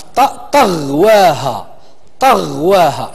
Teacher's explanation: المخرج ديال هذا الحرف هو طرف اللسان مع الاسنان الفوقاني